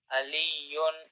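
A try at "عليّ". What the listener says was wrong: With an ayn. Ayn at the beginning.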